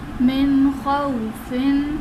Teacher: نون ساکن کے بعد حروف حلقی میں سے حروف آ رہے ہیں، تو یہاں پر اظہار کا قاعدہ ہوگا، یعنی ہم نے نون ساکن میں غنہ نہیں کرنا ہے